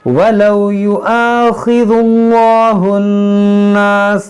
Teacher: बीच में जो अलिफ है ये अलिफ गिर जाएगा, इसको हम नहीं पढ़ेंगे